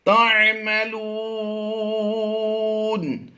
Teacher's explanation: میم ساکن کے بعد حرف با اور میم کے علاوہ تا آ گیا تو یہاں پر اظہار شفوی کرتے ہوئے بغیر غنہ کے پڑھیں گے